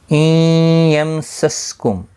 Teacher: نون ساکن کے بعد یرملون کا یا ادغام مع الغنہ ہوگا، گنہ کے ساتھ پڑھیں گے.